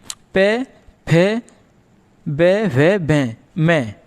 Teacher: जब हम इनका उच्चारण करते हैं तो हमारे जो दोनों ओठ हैं आपस में स्पर्श करते हैं, यानी टच करते हैं एक दूसरे को, इसलिए हमने इन्हें प वर्ग में रखा है।